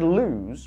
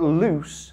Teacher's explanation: the word lose with the ending z but loose has a s